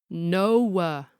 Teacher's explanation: the one-syllable word that is tortured into a whole triphthong